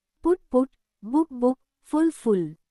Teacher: These have a short u sound with round lips.